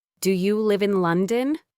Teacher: The pitch goes up on London. This signals to the other person that I am expecting an answer.